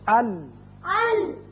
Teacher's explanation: اور، اب آپ نے دیکھا کہ زبان کا اگلا سرا اور لام میں پہلے چاروں جو دانت ہیں ان کے ساتھ لگنے سے یہ لام ادا ہوتا ہے